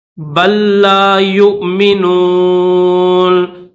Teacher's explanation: یہ جو پہلا لام ہے اس پہلے لام کی آواز بالکل نہیں نکالنی۔ بل لا یؤمنون، یا کے بعد نیچے واو بھی ہے لیکن اس واو کو نہیں پڑھیں گے۔